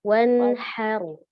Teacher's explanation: Haknya dari tengah, alir nafasnya.